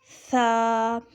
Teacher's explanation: جب ہماری زبان سامنے والے اوپر نیچے کے دونوں دانتوں سے لگتی ہے تو ثا ادا ہوتا ہے